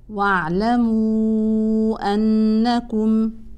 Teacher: ان المشدده طبعا حكمها هنا بمقدار حركتين